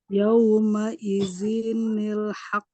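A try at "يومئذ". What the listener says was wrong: Z-nya pendek. Yauma idzinil. Jadi setiap tanwin jika dia bertemu dengan hamzah wasol, maka cara bacanya harus ditambah dengan nun kasroh, ya, dengan bunyi ni.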